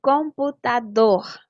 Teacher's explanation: E computador, a sílaba tônica é dor.